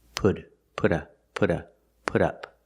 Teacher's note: the T in put changes to a fast D